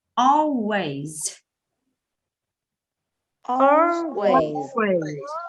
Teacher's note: We have 4 words with the stress on the first syllable.